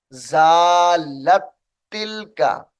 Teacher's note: ये जो लाम है इसको ताए मुशद्दद के साथ मिलाएंगे